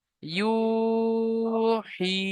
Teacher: ইয়া মাদ্দাহকে এক আলিফ পরিমাণ টান দিয়ে পড়তে হবে।